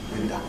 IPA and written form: ˈwɪndə (winder)